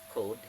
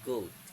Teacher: K is voiceless velar plosive consonant, while G is velar plosive consonant